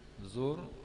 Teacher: ra tafkhim, ra dibaca dengan tebal